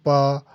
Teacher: पा को without lips को टच किए बगैर आप प्रोनाउंस नहीं कर सकते। इसमें लिप्स का जो ना टच होना लाजमी है। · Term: पा साउंड